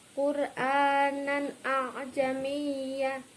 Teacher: Lah, di sini nan a berarti terdapat idhar halqi dibaca jelas karena fathah tanwin bertemu dengan alif